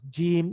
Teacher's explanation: پھر جیم، جیم کیسے ہوتا ہے کہ وسط زبان، درمیان کا، زبان کا درمیانی حصہ جب اوپر اپنے سامنے والے اوپر جو اس کا تالو ہے اس کے ساتھ ملتا ہے تو وہ جیم کی آواز